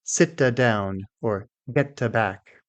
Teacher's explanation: Another common problem is to add an extra sound after the t.